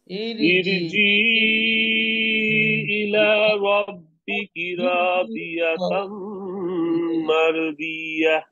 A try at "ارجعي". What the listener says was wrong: আচ্ছা এখানে আরেকটু কারেকশন করি এটা ইরজিই হবে না এটা হবে বলছিলাম রটা মোটা উচ্চারণ হবে ইর হবে ইর ইর